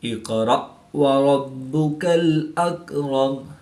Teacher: حمزہ ساکن ہے تو اس کو جھٹکا دے کر پڑھیں گے